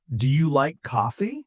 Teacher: My voice goes up on coffee. Coffee. This tells the other person I am waiting for a yes or a no.